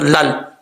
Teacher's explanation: اگر یہاں پہ ملا کے پڑھیں گے تو لام کے بعد جو یہ جو حمزہ آ رہا ہے اس کو چھوڑ دیں گے، لام کو ڈائریکٹ لام سے ملائیں گے